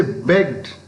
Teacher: But if you say begged, B-E-G-G-E-D, they're also the same morpheme, same past morpheme, pronounced in a different way. It is pronounced d, not t, d, because the word ends in a voiced sound.